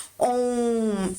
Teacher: है लास्ट हमारा प्लुत स्वर जिनके उच्चारण में हस स्वर से तीन गुना समय लगता है बहुत लंबा बोला जाता है